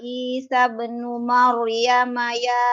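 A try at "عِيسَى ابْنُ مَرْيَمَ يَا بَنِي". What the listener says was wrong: jangan masuk ke nun.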